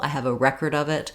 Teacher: Record is stressed on the first syllable.